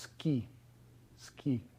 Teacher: So the u isn't pronounced. You don't say suki unless you're being very slow and careful. It's still a vowel in the sense that your tongue and the rest of your vocal tract is still in the configuration that it would be if your vocal cords were vibrating, but they aren't. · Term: voiceless vowels